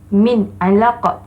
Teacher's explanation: nunnya terang nyata tanpa dengung